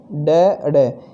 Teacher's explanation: इनके उच्चारण में जीभ ऊपर उठकर झटके के साथ नीचे गिरती है